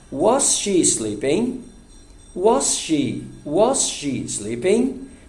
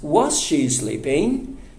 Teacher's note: Mas a entonação é subindo, é raising sound. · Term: entonação ascendente